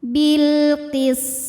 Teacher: Kemudian ada hukum alif lam yang dinamakan dengan alif lam qamariyah karena alif lam menghadapi huruf qamariyah yaitu huruf qaf, maka lam sukun kita bunyikan dengan idhar atau jelas.